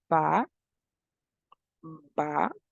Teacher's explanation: We have the consonant ba, ba, as we try to pronounce it. We can notice that both lips get in contact, so it is a voiced bilabial stop.